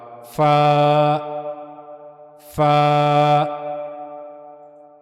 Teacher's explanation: تو سب سے پہلے فا کی ادائیگی کے بارے میں ہم نے پڑھا کہ اوپر کے اگلے دو دانتوں کے کنارے نیچے کے ہونٹ کے اندرونی حصے کے ساتھ جا کر جب ملیں گے تو وہاں سے فا ادا ہوگا۔ اوپر کے اگلے دو دانتوں کے کنارے نیچے کے ہونٹ کے اندرونی حصے سے جب جا کر ملیں گے تو وہاں سے فا ادا ہوگا